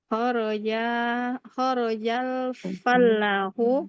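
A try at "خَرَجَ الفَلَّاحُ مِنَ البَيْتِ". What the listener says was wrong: Mumtaz.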